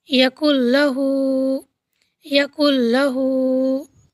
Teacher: ہم نے نون ساکن کو کیا کیا، لام سے ملا دیا، بالکل ملا دیا، اور نون کی آواز پتہ نہیں چل رہی ہے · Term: ادغام تام